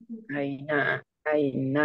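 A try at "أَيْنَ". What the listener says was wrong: Tipis. Versi tebalnya Aina nih. Ngambang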